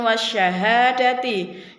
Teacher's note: wa syahadati disitu adalah disebut hukum bacaan alif lam syamsiah karena alif lam bertemu dengan huruf syin yang pada akhirnya Alif lamnya tidak terbaca